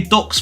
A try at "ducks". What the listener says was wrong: No, you can't. You can't say Northerners cannot say the vowel Cup. Duck.